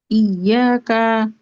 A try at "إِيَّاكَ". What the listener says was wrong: না, বড় কা, ইয়া কা।